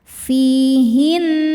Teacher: Nunnya gunnah musyaddadah karena nun bertasydid. Cara bacanya berdengung, tahan dengungannya kurang lebih 2 harokat.